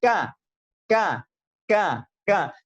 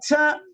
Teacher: Pada 2 huruf ini hanya saja sifat syiddah lebih mendominasi daripada sifat hamas.